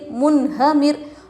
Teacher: منہمر، میم نون پیش من، ہا زبر ہا، منہ میم را زیر مر، منہمر. نون ساکن کے بعد حروف حلقی میں سے ہا آ رہا ہے، نون کو ظاہر کر کے بلا غننے کے جلد پڑھیں گے